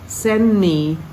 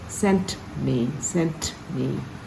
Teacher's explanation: we have to still hear the T